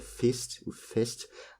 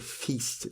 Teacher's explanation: Si vous vous demandez, en fait, la différence en termes phonétiques, c'est que c'est un petit i pour le point, donc c'est fist ou fest, alors que pour le festin, c'est feast. Donc du coup, ça se prononce bien avec un long i.